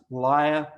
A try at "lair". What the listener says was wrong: It's actually pronounced layer. Liar is someone who doesn't tell the truth. Layer, and it's the,